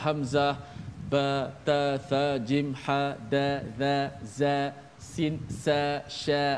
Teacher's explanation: huruf tu semuanya condong ataupun suaranya suara tidak tebal, suaranya dinipiskan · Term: huruf muraqqaqah